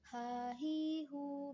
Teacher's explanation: huruf H dikeluarkan dari tengah tenggorokan kita